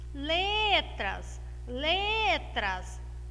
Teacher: letras, a minha sílaba tônica é o lê. Nós temos uma palavra paroxítona, tá bom?